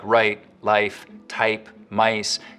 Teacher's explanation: starting point of words like right, life, type, mice can get raised too